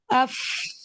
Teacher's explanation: आप महसूस करेंगे आपके ऊपर वाले दांत आपके नीचे लिप्स के अंदर टच कर रहे हैं